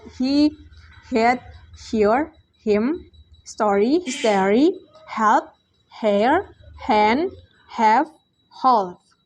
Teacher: Voiceless glottal fricative sound H